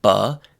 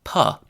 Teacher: And that is the mistake a lot of people make. Instead of saying b, they throw out the vibrations and say p.